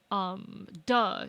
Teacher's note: is a plosive that happens like right behind the teeth